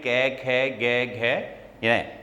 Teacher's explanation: इनका उच्चारण स्थल होता है कंठ, कंठ की कोमल तालु। और इस वर्ण ध्वनि का नाम होता है कंठे ध्वनि।